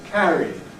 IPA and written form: ˈkærid (carried)